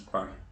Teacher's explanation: La S final no se pronuncia pas. Jamais, nunca, nunca se pronuncia la S final.